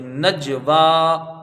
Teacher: ایسی نون جیم زبر نج، واو خڑا زبر وا، نجوا، نون کو جیم سے ملایا جائے گا اور یہاں متوسط درجے کا قلقلہ ہوگا، یعنی ایک لوٹتی ہی آواز آئے گی